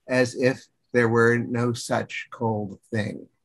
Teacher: there's a spondaic effect of strong beats, which slows the meter down. It's not necessarily very iambic feeling.